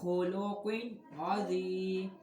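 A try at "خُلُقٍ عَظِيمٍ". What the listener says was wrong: خلق عظیم میم دو زیر من عظیم خلق عظیم خلق عظیم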